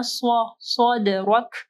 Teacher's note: دال کے اوپر کلکلہ کرنا ہے اور را کو جو ہے ہیوی پڑھنا ہے